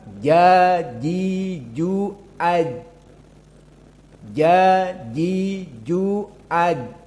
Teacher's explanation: Adapun keduanya sama makhrajnya dengan ya, di mana dia wastul lisan. Jim dengan ya di pertengahan lisan dengan alhanak al-a'la.